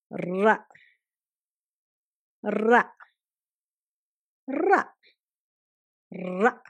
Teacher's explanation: நாக்கு வந்து ர ர ர என்று ரோல் பண்ணனும்